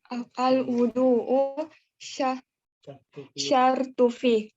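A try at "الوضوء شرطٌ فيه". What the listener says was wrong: tanwinkan syartun fi.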